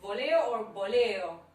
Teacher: in the pronunciation, the V and the B are very close to each other